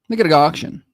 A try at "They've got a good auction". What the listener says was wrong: It sounded like the first three words sounded like one word,